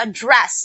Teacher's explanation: the second syllable was stressed so that means it is a verb